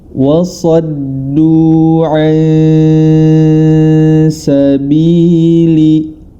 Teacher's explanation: Nun sukun bertemu dengan huruf sin, maka cara membacanya adalah disamarkan. Samar dalam artian antara idgham dan izhar disertai dengan gunnah, atau hukum tersebut kita kenal sebagai ikhfa.